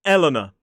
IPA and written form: ˈelənə (Eleanor)